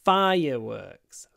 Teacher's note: it's a word which consists of two nouns fire and work so the stress as always is on the first